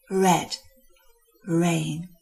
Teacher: at the beginning of the word, the tongue tip just moves from the palate to the vowel.